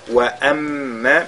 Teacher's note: mim mushaddada, on fait toujours al-ghunna.